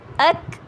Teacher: اخ، او، او، اک. یہ دیکھیے کاف ساکن ہے اور اس میں ہم باؤنس نہیں ہونے دیں گے اور نہ ہی ہم اس کو ہیوی کریں گے